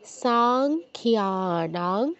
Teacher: অনুস্বারের জায়গায় আমাদের বাংলা অনুস্বারের মতো উচ্চারণ হবে, যেহেতু পরে হচ্ছে ক বর্গের অক্ষর আছে, ক বর্গের অনুনাসিক ধ্বনি ক, খ, গ, ঘ, ঙ।